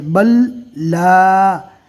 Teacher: تو اس جزم والے حرف یعنی لام کو چھوڑ دینا ہے، با کو ڈائریکٹ لام سے ملانا ہے، اس لیے کہ جزم والے حرف کے بعد تشدید والا حرف ہے، تو جزم والے حرف کو چھوڑ دیں گے اور با کو ڈائریکٹ لام سے ملائیں گے، اس طرح پڑھنا ہے۔